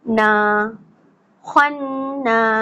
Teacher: نون کے اوپر زبر ہے, اس کو کیا کرنا ہے کہ جلدی پڑھنا ہوتا ہے, لیکن جب زبر کے بعد الف خالی آ جاتا ہے تو ہمیں اس الف کو پڑھنا ہوتا ہے, اور اس زبر کو پھر ہم جلدی نہیں پڑھتے, 2 کاؤنٹس کھینچ کے پڑھتے ہیں, یا اتنی دیر پڑھتے ہیں جتنی دیر میں بند مٹھی سے 2 انگلیاں کھل جائیں.